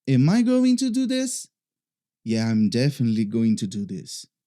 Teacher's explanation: Você vai ver que na primeira frase, que é uma pergunta, geralmente esse tipo de entonação que eu vou demonstrar é nas perguntas que acontece, ele sobe. E depois na resposta ele desce. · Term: intonation